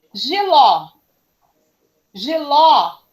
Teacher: porque a última sílaba que é a sílaba tônica é a sílaba mais forte que aquela que eu falei com mais intensidade